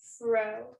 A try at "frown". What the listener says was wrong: Oh, wait. When you said fro, you left out a sound.